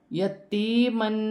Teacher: یا مدہ بھی ہے اور 2 زبر کی تنوین بھی ہے، اس میں غنہ بھی کیا جائے گا